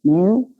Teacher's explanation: Es una R uvular que se debe articular bastante posterior, ¿no? En la zona posterior de la cavidad bucal.